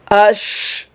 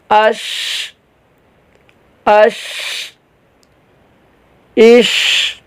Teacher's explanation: سانس جاری رہتا ہے، آواز چلتی رہتی ہے، اس میں جو وہ زبان کا جو درمیان ہے تالو کے درمیان سے بالکل ٹچ نہیں ہوتا بلکہ اسپیس رہتی ہے، کچھ فاصلہ رہتا ہے. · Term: ہمس